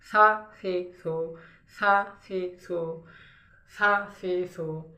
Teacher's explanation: সা বলার সময় জিহ্বার আগাটা জিহ্বার আগাটা উপরের দাঁতের সাথে লাগবে লাগবে এরকম, লাগবে না তবে লাগবে লাগবে এরকম, সা ফি সু।